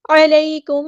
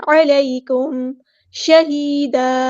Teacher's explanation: میم ساکن کے بعد شین آیا تو یہاں پہ اظہار شفوی ہو رہا ہے